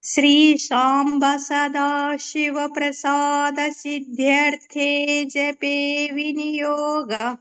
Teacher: సిద్ధ్యర్థే కూడా మహాప్రాణం రావాలి, జపే దీర్ఘం రావాలి